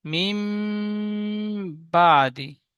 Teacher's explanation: আবার আমার সাথে বলেন, নুন সাকিনের পরে বা এসেছে, তাই নুন সাকিনের আওয়াজকে মিমের দ্বারায় পরিবর্তন করে এক আলিফ পরিমাণ গুণনা করে পড়তে হবে, একে ইকলাব বলে